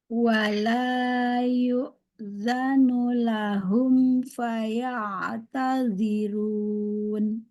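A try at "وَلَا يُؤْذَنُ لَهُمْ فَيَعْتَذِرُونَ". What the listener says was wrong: Ya, domanya nggak sama tuh. Pas faya'tazirun itu bagus. Tapi sebelumnya nggak sempurna tuh. Jadi pas lahumnya lahum. Harusnya hum. Jadi namanya vokalnya nggak tajam, harus tajam dia.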